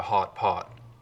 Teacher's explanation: They sound the same up here, just like they do everywhere in the West and in Canada. But one thing you hear a lot up here is a lip-rounded vowel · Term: lot rounding